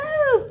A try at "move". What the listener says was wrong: Get your lips together.